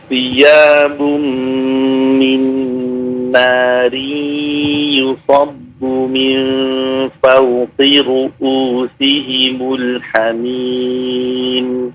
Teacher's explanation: Ru'u bukan ain tapi hamzah ya.